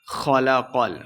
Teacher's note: خا اور قاف دونوں کو موٹا پڑھنا ہے